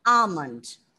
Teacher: The L was silent and you pronounced it correctly, but the sound should be ah. Okay, the long sound.